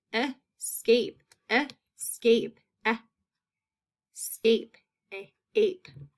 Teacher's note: You can hear that long A in that second syllable.